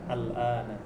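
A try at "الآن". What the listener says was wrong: No. Al-an. Disukun huruf terakhir ya kalau ngomong. Al-an.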